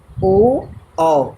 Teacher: ओ और औ का उच्चारण स्थान कहाँ से होता है बच्चों, कंठ और ओष्ठ, कंठ और ओष्ठ। जब हम ओ और औ का उच्चारण स्थान करते हैं तो हमारी जिह्वा कंठ और ओष्ठ को स्पर्श करती है।